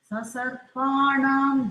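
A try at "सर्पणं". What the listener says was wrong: இன்னும் கூட கொஞ்சம் நாம் இன்னும் கொஞ்சம் கொடுக்கலாம். Slight. It is Dirgha consonant. Yeah, Pa is Dirgha elongated. Rendu maatram. So, Sasarpanam darpam. You have to be comfortable to give that much of this thing instead of rushing it.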